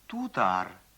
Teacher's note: Т произносится примерно как д